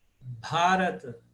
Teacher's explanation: Porque o A, terceiro A é longo.